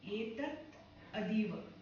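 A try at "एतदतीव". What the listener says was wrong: Yetat adiva. But when you are saying it, yetat adiva. Yetat adiva. Try and say it together. Don't split it.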